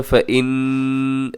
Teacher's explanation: نون مشدد ہے، یہاں غنہ کیجیے گا